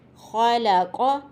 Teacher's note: یہاں خ بھی ادنی حلق سے ادا ہوگی